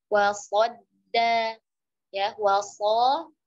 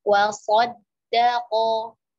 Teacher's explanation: waw-nya tipis, qad-nya tebal, masuk ke dal tipis lagi, kemudian of-nya tebal, wasaddaqo.